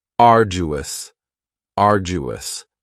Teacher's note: Next is arduous, and arduous has 3 syllables, and the stress is on the first syllable, arduous. Now you don't hear that D sound that much. It's not very strong. It almost sounds a little like a J.